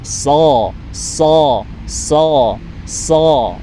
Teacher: huruf so itu pangkal lidahnya dinaikkan ke atas supaya menebal.